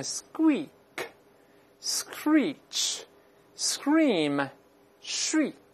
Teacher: 词，做动词做名词都可以，我们大声来读一下▁scream▁scream，▁同样不要读成▁scream，▁这个还是浊化成▁g，▁尽管呢他听不太清楚，但依然有浊化的痕迹。再来一遍▁scream▁scream，▁再读第二个▁shriek▁shriek，▁你看它本身发音呢就比较尖锐，你发现了吗？中间都是长音一，你看▁ squeak▁screech▁scream▁shriek▁都是发出尖尖这个很尖锐的声音，发长音一，细细的声音